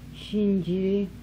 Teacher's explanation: Voiceless palatal alveolar fricative.